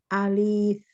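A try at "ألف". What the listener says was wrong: Tidak panjang. Enggak, alifnya ulangi. Alif, alif, tidak alif. Enggak, tidak panjang ya. Enggak ada ya sukunnya. Alif.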